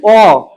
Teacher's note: উচ্চারণ করতে গেলে ঠোঁটটা অনেকটা খুলে যাচ্ছে আর জিভটা নিচের দিকে আসছে।